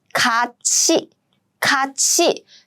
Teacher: But no, this is an exception. When 티읕 meets 이 sound, these two combined and they become 치. So the correct pronunciation is not 같이, but it should be 같이. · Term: palatalization